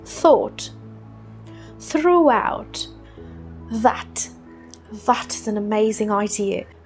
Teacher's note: The th sound. Notice how British go more exaggerated. They throw their tongue out to be able to make this th sound.